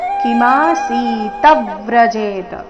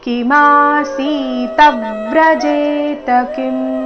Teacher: ಕೊನೆ ಚರಣದಲ್ಲಿ ಒಂದೇ ಒಂದು ಆಘಾತ, ಕಿಮಾಸೀತ ವ್ರಜೇತ. ಕಿಮಾಸೀತ ತ ತ ಮೇಲೆ ಆಘಾತ, ಮುಂದೆ ವ್ರ ಸಂಯುಕ್ತಾಕ್ಷರ ಬಂದ ಕಾರಣ